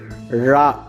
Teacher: இது பார்ப்பதற்கு நா போல் இருப்பதால் நகர லகரம் என்றும் அழைப்பர் அடுத்து ழ நாவின் நுனி மேல்நோக்கி வளைந்து தொடுவதால் ழகரம் தோன்றும் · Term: சிறப்பு ழகரம்